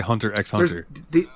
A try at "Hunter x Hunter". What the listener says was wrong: I was literally going to say the X is also silent. Hunter. Yes. Yeah, it actually is.